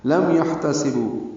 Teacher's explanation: حا ساکن پہ ہمس